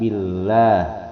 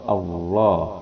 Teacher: Ini billah hukum bacaannya tarkik, dia ditipiskan. Cara membacanya dengan bunyi a, billah. Ya kalau tafhim pakai o, Allah.